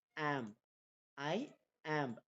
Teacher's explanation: ஐ வந்து stress free, ஆம்ப் வந்து stressed. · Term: அயாம்ப்